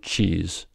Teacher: tongue is in the position to make a t sound but instead of releasing the air entirely quickly you release it only partially and turn it into a fricative thus resulting in the sound CH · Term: affricates